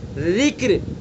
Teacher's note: را ساکن, اس سے پہلے کاف ساکن, اس سے پہلے را کے نیچے زیر. اس لیے ذکر کی را باریک, فکر کی را بھی باریک, ہجر کی را بھی باریک